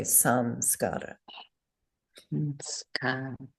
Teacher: So we change the anusvara to a fourth varga nasal, n, a plain N.